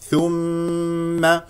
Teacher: ثم ميم مشدده فيها غنه بمقدار حركتين